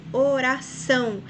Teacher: Veja que são é a sílaba mais forte, então a palavra oxítona, porque é a última sílaba.